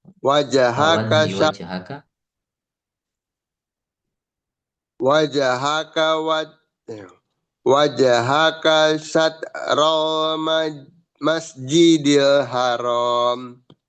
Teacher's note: Wajhaka syatral harus cepat. Di situ tidak ada yang panjang.